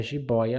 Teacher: esse primeiro um ditongo ele tem um som aberto mais alto mais forte